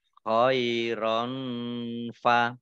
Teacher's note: fathah tanwin bertemu dengan huruf fa, bacaan ikhfa. Dibaca samar-samar.